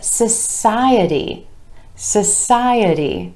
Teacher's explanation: with emphasis on the I vowel sound right before our suffix